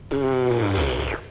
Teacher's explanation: 首先卷你的舌头，卷起来之后呢，吸气，因为它是吸气的声音，这个气流会跑到肺里面 ，这样子。那舌头会这样震动，然后产生跟上颚的摩擦力。焦点放在哪边呢？就是舌头的中间位置处，这个位置跟上颚摩擦的交界处，焦点放在这边，然后吸气，着重在那个位置，你就会找到最好的声音位置。就是有这样子，可是单这样听其实没有那很悦耳，但是你用在节奏里面会是一个非常好的音效。然后做这个声音的时候，可以分那种小片段、小片段，也可以一大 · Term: 内吸卷舌音